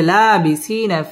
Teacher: জেরের বাম পাশে জজম আলাইয়া মদের হরফ একালিফ টেনে পড়তে হবে